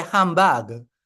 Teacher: that b is a bilabial sound it's produced with both lips